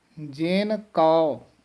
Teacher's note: ਜਿਨ ਕੋ ਨਹੀਂ ਕਹਿਣਾ ਹੈ, ਜੇਨ ਕਉ। ਕਉ ਦਾ ਉਚਾਰਨ ਜਿਹੜਾ ਹੈ ਊੜੇ ਔਂਕੜ ਹੈ, ਬੰਦ ਮੂੰਹ ਵਾਲਾ ਔੜਾ ਊੜਾ ਹੈ